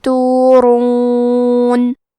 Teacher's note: کلمت تورون میں بھی حرف الراء کا حکم ہے تفخیم تو ہم یہ حرف کو موٹی آواز میں پڑھیں گے